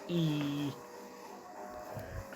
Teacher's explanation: तो ऐसे स्वर ध्वनि होती हैं जिनमें बिना व्यंजन की ध्वनियाँ बनाए जीवा को मुंह से जितना संभव हो सके उतना ऊंचा और तालु के समीप रखा जाता है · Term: संवृत स्वर